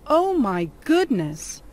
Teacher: the intonation or the word stress are on the words oh and goodness